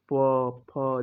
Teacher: प वर्ग होठ टच होगा, प, फ, जैसे आपको देखोगे फील कर रहे होगे कि ऊपर और नीचे का होठ टच हो रहा है। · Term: होष्ट व्यंजन